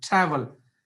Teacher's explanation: So the stress is not on the second syllable, the stress is on the first syllable